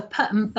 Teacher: p and b and are bilabial sounds made at the front of the mouth